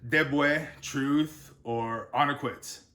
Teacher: at the start of a word it sounds like a D sound but at the end it's more of a t